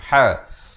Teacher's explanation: Yang kita nak cari ha. Di pertengahan kerongkong.